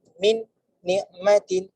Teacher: Cuma nak memudahkan dalam bahasa Arab ni biasanya kita akan baca sekali terus. Nun huruf yang sama di dalam Al-Quran, huruf yang pertama mati, huruf yang kedua berbaris, maka dia akan terus masuk huruf yang kedua.